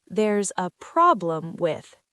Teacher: Remember where the stress goes? On problem.